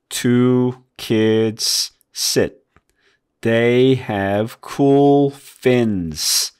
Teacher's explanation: 끝에 있는 스 소리를 내기 때문에 그런 소리가 나는 거예요. 왜냐면 끝에 있는 S 소리가 때로는 S 소리도 나지만 Z 소리도 난단 말이에요